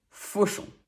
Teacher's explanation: AU is one of the many ways we spell the sound O, and on is a nasal sound. Make the O shape with your mouth to achieve it.